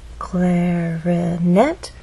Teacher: clarinet has three syllables clarinet but it's the final syllable that is stressed and there's a pause right after which means there's nothing following